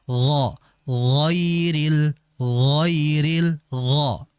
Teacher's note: terangkatnya pangkal lidah ke langit-langit atas